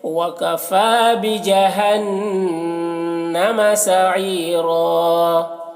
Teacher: سعیرہ یہاں پر یا مدہ ہے، اسے ایک الف کے برابر کھینچیں گے۔ اور را کو پور پڑھنا ہے اور یہاں پر وقف کریں گے تو ایک زبر کے ساتھ الف پڑھیں گے، جیسے وَكَفَى بِجَهَنَّمَ سَعِيرًا۔